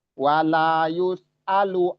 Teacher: sinnya rokhawah, dirokowahkan atau dialirkan suaranya, namun jangan diseret, ya, jangan diseret.